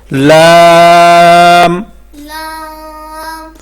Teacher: لام سامعین کرام، یہ لام ہے، جو لام کا مخرج ہے زبان کی کروٹ سے نوک تک کا حصہ۔ جب ثنایا، رباعی، انیاب اور ضواحک ان 4 دانتوں کے مسوڑوں سے لگے تو لام ادا ہوتا ہے